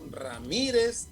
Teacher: Ramírez, también es una palabra grave que se acentúa porque la mayor intensidad está en la penúltima sílaba